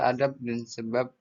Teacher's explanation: Misalnya fonem B pada silaba akhir kata adab dan sebab diucapkan P, adab dan sebab yang persis sama dengan pengucapan fonem P, maka atap dan usap. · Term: Netralisasi